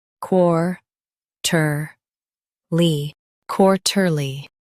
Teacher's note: Emphasize quar and keep ter light.